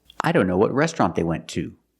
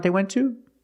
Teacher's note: And we pronounce it to when it's stressed. And it's stressed when it's at the end of a sentence.